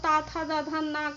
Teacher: ता था दा धा ना का उच्चारण स्थान क्या है, दंत है